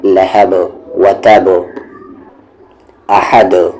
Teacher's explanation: और लास्ट में कलकला करेंगे। दाल पे साकिन आ जाए, जज़म आ जाए तो वहाँ पर कलकला करते हैं, आवाज़ को बाउंस करते हैं